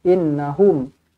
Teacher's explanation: Inna nun sabdu wajibul gunnah, dengungkan dua harakat. Hum sebut betul-betul hum, tak nak hom.